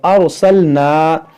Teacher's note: یہاں را ساکن سے پہلے زبر ہے, اس را کو پر پڑھیں گے یعنی موٹا پڑھیں گے